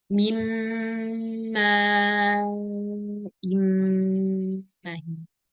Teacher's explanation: ma di sini fathahnya 1 harakat. Maka jangan ditaulid.